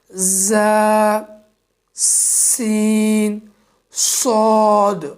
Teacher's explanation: زبان کی نوک اور دونوں دانتوں کے اندرونی کناروں سے ادا ہونے والے یہ بھی حروف تین ہیں: ز، سین، صاد، اور ان کو سیٹی والے حروف بھی کہا جاتا ہے۔